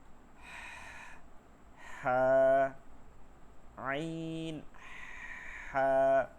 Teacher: ফিস ফিস আওয়াজ গলার মধ্যে, যেমন আমরা কথা বলার মধ্যে ফিস ফিস আওয়াজে কথা বলি না অনেক সময়, সে ঠিক এরকম। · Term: হলকের মধ্যখান